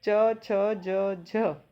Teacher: ये वैसे तो स्पर्शी व्यंजन है पर इनमें बोलने के लिए हमें संघर्ष भी करना पड़ रहा है, इसीलिए इन्हें स्पर्श संघर्षी व्यंजन कहा जाता है।